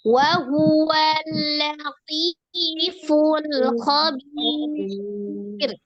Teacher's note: Ya sukun sebelumnya kasroh, di huruf ba ketemu dengan ro. Ro-nya dibaca tipis ya. Karena sebelumnya di situ ada ya sukun, sebelumnya sukunnya kasroh.